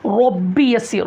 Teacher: दुआ में पढ़िए रब्बी यस्सिर, रब्बी रॉ पुर होना, रब्बी यस्सिर, यस्सिर सीन की सीटी निकलना यहाँ पर, रब्बी यस्सिर, सिर जो बोल रहे हैं वो बारीक बोलना, आमतौर पर पुर कर देते हैं उसको, यानी कि मोटा कर देते हैं, सिर बोल देते हैं।